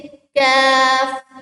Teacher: इसको हम बारीक पढ़ेंगे। जैसे कैफ, होंठों को गोल भी नहीं करेंगे। · इसमें हम जुबान की जड़ को मुंह की तरफ सख्त तालु के साथ लगाएंगे।